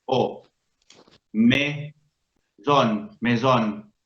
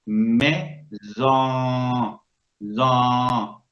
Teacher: La O que sigue se nasaliza y no es nasal, porque la N que lo acompaña hace que la N como desaparezca, como que se le pega a la O y entonces la O suena nasalizada, no nasal